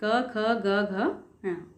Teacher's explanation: तो जब हम क, ख, ग, घ, ङ का उच्चारण करते हैं तो हमारी जो ध्वनि है वो कहाँ से निकलती है? कंठ से, यानी गले से. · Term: क वर्ग